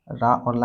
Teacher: तालु से या निकलता है, मूर्धन्य से नहीं निकलता, दंत से रा और ला निकलता है।